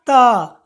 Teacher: जब आप त को बोलिएगा तो आपका जो जीभ है बच्चों वो देखिए दांत के पीछे में, यानी कि जस्ट दांत के पीछे को टच करेगा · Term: दंत्य वर्ण